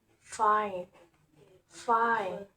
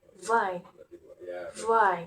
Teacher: F and V different voicing, with F is voiceless and V is voiced. They are articulated at the labiodental place, where the bottom lip touch the upper teeth. F, V. Both have a fricative manner, where air flows out with frication.